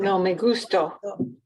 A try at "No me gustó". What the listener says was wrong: No me gustó. Casi. La pronunciación otra vez, ¿sí? El énfasis. No es gusto. Gustó.